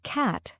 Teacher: the word cat has a broader A sound compared to British English